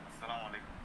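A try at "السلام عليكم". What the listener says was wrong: মুখে কি একটু এক আলিফ দুই আলিফ টান পড়ে না? আসসালাতে টান আছে তো, আসসালামু আলাইকুম।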